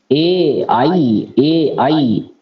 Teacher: एकार है और ऐकार है, इसका कंठ और तालु दोनों से उच्चारण होता है